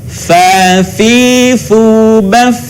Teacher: Huruf fa keluar dengan menyentuhkan ujung dua gigi seri bagian atas dengan bibir bawah bagian dalam. Diucapkan dengan mengalirkan suara sekaligus dengan udaranya dengan lembut.